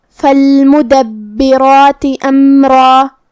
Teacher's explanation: ہم حمزہ کو ظاہر کریں گے اور اسے حلق کے نیچے والے حصے سے ادا کریں گے۔ پھر میم ساکن ہے تو ہمیں میم کو ظاہر کرنا ہے۔ · را پہ تنوین زبر ہے تو ہمیں را کو بھاری آواز میں پڑھنا ہے، اور جو کہ اس کے بعد مد الف ہے تو ہم را کو اور مد الف کو دونوں کو بھاری آواز میں ادا کریں گے